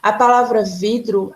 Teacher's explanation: A palavra vidro, a sílaba forte, a sílaba tônica é vi, vai ficar aqui no meio. Então, quando a sílaba forte é a penúltima, nós dizemos que ela é uma palavra paroxítono